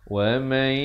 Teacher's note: nun mati bertemu ya, masuk beserta dengung 2 harakat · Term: idgham bi gunnah